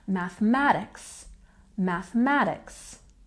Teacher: we've got the primary stress here on the math part and the secondary soft stuttle stress in the beginning